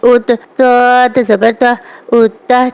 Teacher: یہ حروف مستعلیہ میں سے ہے، اسے پر پڑھا جائے گا